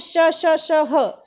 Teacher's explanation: इनको बोलने में घर्षण होता है, गर्म हवा निकलती है, इसीलिए ये ऊष्म व्यंजन है।